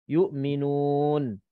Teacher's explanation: Kalau kita sambung yu'minuna, nuna ni mad asli biasa. Tapi kalau kita berhenti, nun yang last kali itu mati. Yu'minun. Bila tapi mati disebab kita berhenti. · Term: mad arid sukun